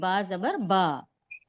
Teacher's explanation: محسوس کریں کہ ہمارے دونوں ہونٹوں کا گیلا حصہ آپس میں مل رہا ہے